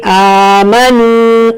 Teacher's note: اس کے اوپر کھڑی حرکت ہے تو ہم 2 حرکت کھینچ کر پڑھیں گے، آمنوا، اور یہاں پر واو مدہ ہے، یہاں پر بھی آپ کو 2 حرکت کھینچ کر پڑھنا ہے، آمنوا، وعامی، مڈل تھرڈ سے آئین، وعاملوا الصالحات۔